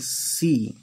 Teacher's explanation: ऊपर जबान को ले आकर और बीच में से हवा निकाल के और बारीक आवाज़ निकालते हैं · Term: सीन